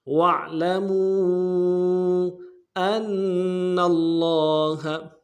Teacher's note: حمزہ کو نون ساکن کے ساتھ ملانا ہے، نون ساکن میں غنہ کریں گے اور تشدید ہے زور دیں گے. اگلے نون کو لفظ اللہ کے لام کے ساتھ ملانا ہے، لفظ اللہ کے لام کے اوپر تشدید ہے زور دیں گے، اگلے لام کے اوپر کھڑا زبر ہے، ایک الف دار میں کھینچیں گے، ہا کو نون سے ادا کریں گے. · فیہ الا ان تغمضوا فیہ واعلموا، واو کو عین کے ساتھ ملانا ہے، عین کو موٹا ادا کریں گے موڑ حروف سے، لام کو نرم سے ادا کریں گے، میم کو واو کے ساتھ ملانا ہے، واو مدہ کے اوپر مدہ عارض ہے، واو مدہ کو ایک الف دار میں کھینچیں گے، لیکن مدہ عارض کی وجہ سے اس کو دو الف دار میں کھینچیں گے